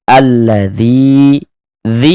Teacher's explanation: Alladzi dzi dibaca panjang ini.